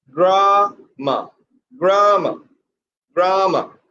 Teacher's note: Dear student, next word is grammar, very common word, and the pronunciation should be grammar, grammar, grammar. Put pressure on the first syllable.